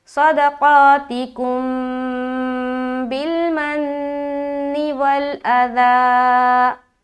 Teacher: با آ گیا. تو میم ساکن کے بعد با آئے تو اخفاء شفوی کا قاعدہ ہوتا ہے, تو غنے کے ساتھ ہم اخفاء کریں گے